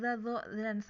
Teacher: sama-sama di ujung lidah bertemu dengan ujung gigi seri atas ya, yang agak dikeluarin lidahnya dikit atau digigit biasanya ngomongnya ya.